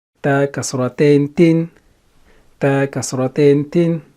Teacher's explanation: Ta is not silent, it has kasratain, and ta is a light letter.